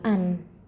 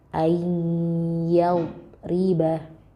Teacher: Nah, kita nggak bacanya bukan an. Nunnya bukan jelas di makhrajnya an. Tapi dia langsung lebur ke huruf selanjutnya. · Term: idgham bi gunnah